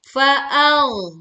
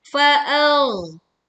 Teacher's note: Tekan pada huruf ghain sukun dengan menebalkan suaranya tanpa memantulkan suaranya. Karena huruf ghain bukan huruf qalqalah atau huruf yang memantul.